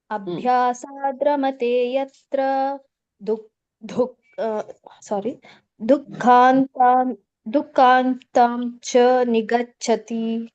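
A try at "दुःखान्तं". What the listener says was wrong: ದೊಡ್ಡ ಧೂ ಬರಲ್ಲ. ದುಃಖಾಂತಂ. ದುಹು ಅಂತ ಕೇಳಿಸ್ಬೇಕು.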